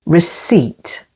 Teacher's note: Receipt, with the stress on the second syllable.